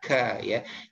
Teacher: huruf k ini dia punya sifat keluar udara sedikit, ya, tapi khusus di huruf hijaiyah saja ya, bukan di huruf Latin.